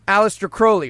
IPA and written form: ˈæleɪstər ˈkroʊli (Aleister Crowley)